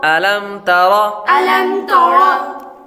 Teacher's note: میم ساکن کے بعد با اور میم کے علاوہ کوئی اور حرف آ رہا ہے تو اس لیے اظہار شفوی کا قاعدہ لگے گا, غنہ نہیں کریں گے. آگے را پر زبر ہے, را پر زبر ہو تو را کو پر پڑھیں گے.